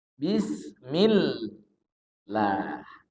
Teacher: tapi kalau bismill lah tipis karena dia baris sebelumnya kasrah